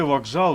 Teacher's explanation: у слові вокзал звук к перед наступним дзвінким з перетворюється на проривний фрикативний звук Ґ